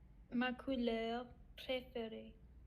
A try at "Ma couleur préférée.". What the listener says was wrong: Mm-hmm. Tu continues.